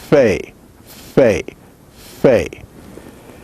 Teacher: Fe is bilabial, fricative, and voiceless.